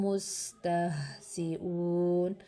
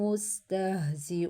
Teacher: سین کی سیٹی نکالنی ہے، زا کی سیٹی نکالنی ہے، واو مدہ کرنا ہے